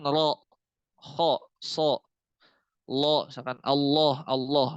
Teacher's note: huruf-huruf isti'la itu ketika dia fathah, itu bunyinya ada o. Ketika dia fathah, bunyinya ada o.